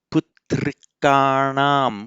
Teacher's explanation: if you want to make the genitive plural of this in anam, putrikanam with the retroflex na, because the k is a letter that does not block the effect of the on the n.